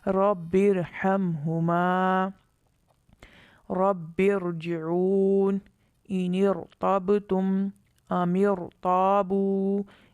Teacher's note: ان تمام مثالوں میں را ساکن سے پہلے زیر دوسرے کلمے میں ہے، اس وجہ سے را ساکن کو پر پڑھیں گے